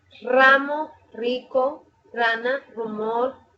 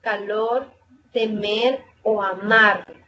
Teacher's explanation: Se escribe una R al principio y al final de una palabra. Al principio suena fuerte y al final suena suave.